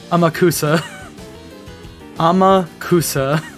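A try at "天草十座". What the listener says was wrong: Yeah, I mean, you're trying to pronounce it like Yakuza. It's not how you pronounce it.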